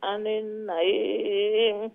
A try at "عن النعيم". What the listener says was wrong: عن নুন মুশাদ্দার গুণ না আবার عن النعيم